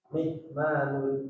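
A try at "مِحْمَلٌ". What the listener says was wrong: Malun jangan panjang-panjang. Mihmalun kan panjang itu.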